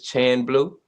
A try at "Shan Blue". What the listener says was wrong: Yes, CH pronounced SH, Shan.